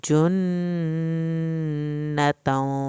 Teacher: نون کی شد پہ دیر لگانی ہے